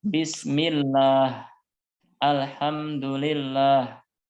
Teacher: tapi kalau sebelum lafadz Allah itu harokatnya kasrah maka dibaca dengan tipis misalnya Bismillah Alhamdulillah yang tidak boleh ya tidak boleh dibaca Alhamdulillah